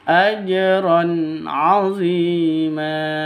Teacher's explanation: Tanwin bertemu dengan ain jelas terang karena izhar halqi.